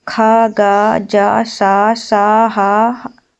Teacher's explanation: मुख के वागांग परस्पर इतने समीप आ जाते हैं कि बाहर निकलने वाली प्रवास वायु को इसके सकरे मार्ग से निकलने के लिए काफी संघर्ष करना पड़ता है। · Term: संघर्षी व्यंजन